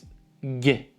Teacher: voiced palatal plosive. So it's G sound, but on the palate. So it's G. It sounds like G.